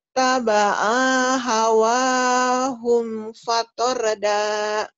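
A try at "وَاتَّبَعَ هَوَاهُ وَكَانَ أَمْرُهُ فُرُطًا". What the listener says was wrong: Ya, ainya pendek, itu juga bukan hum. Ya, wat taba'a hawahu fatorda.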